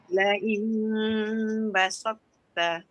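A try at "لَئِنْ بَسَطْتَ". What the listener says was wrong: Dia jangan laju sangat. Tu jadi basalta. Basalta.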